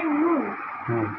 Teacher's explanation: জিহ্বার আগা তার বরাবর উপরে তার সঙ্গে লাগিয়ে আসলে নুন